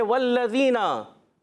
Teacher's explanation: ज़बान का सिरा, ऊपर के दांतों के अंदरूनी किनारे से ज़ाल अदा होता है